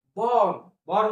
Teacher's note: आरचा उच्चार एकदम थोडासा नकळत करायचा आहे एकदम फर्श असा उच्चार करायचा नाही